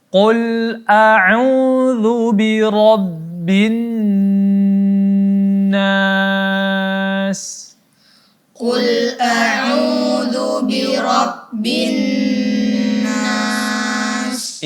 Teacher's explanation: di sini ada nun yang ada tasydid maka di sini gunnahnya yakni 3 harakat sampai 4 harakat.